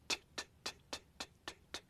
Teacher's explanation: okay now let's try the T sound now note that you're putting the tip of your tongue on your hard palate stopping the air there and then exploding